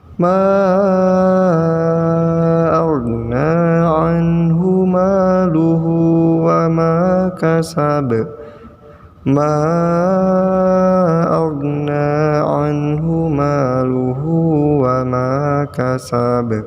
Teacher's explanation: Ba-nya juga dipantulkan ya. Ingat, ma pada awal ayat itu panjang 5 harokat.